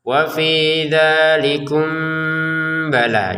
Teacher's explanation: Kalau disambungkan barulah ada namanya samar ya. Mim sukun bertemu ba ini kita baca dengan samar.